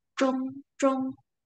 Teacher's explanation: Lidah kita naik ke langit-langit bagian tengah.